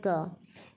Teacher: इसका उच्चारण जिह्वा पश्च को कोमल तालु से मिलाकर होता है। भीतर से निर्गम वायु को स्पर्श के द्वारा अवरुद्ध किया जाता है और फिर वायु वेग के कारण विस्फोट होता है। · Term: अघोष अल्पप्राण कंठ स्पर्श